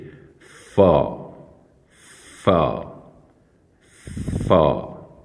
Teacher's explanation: اوپر کے جو دو دانت ہیں انہیں ہونٹوں کے نیچے والے ہونٹ کے درمیان میں لگا کر اسے ادا کریں گے، جیسے فا فا فا۔